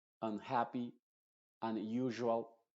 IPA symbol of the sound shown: ʌ